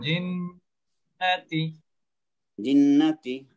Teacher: এখানে গুণনা আছে মাদ নাই